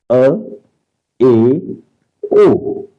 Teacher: अर्ध समृत यानी समृत से थोड़ा अधिक खुला हुआ मुंह थोड़ा अधिक खुला हुआ अ ए ओ इन्ह अर्ध समृत स्वर